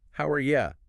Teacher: And the main stress is clearly on how,